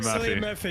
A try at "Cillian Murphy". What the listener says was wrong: Did you just say Cillian? It's Killian. Killian Murphy.